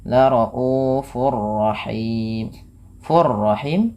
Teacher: Cara membacanya tanwinnya masukkan kepada huruf ro dan ditahan. Kemudian him ada bacaan mad arid. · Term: idgham bila gunah, idgham bila gunnah